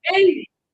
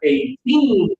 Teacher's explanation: bigger numbers, stronger first syllable, 80. And smaller numbers between 10 and 20 are 18. Stronger final syllable